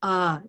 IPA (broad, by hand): ʌ